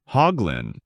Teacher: In America, people say hoglin with a clear h and emphasis on the first syllable. Hoglin, making it sound firm and direct. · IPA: /ˈhɔːɡlɪn/